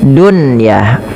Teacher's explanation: tidak diidgamkan tapi dibaca dengan jelas suara nunnya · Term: izhar mutlak